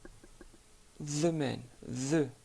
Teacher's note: sortir un petit peu le bout de votre langue tout en l'attachant avec le bas de vos incisives supérieures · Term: la lettre ذال